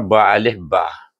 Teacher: Huruf ba saya dah tuliskan di sini iaitu dia keluarnya daripada bibir yang tertutup. Mula-mula tutup ba tutup eh nak sebut mesti buka mulut.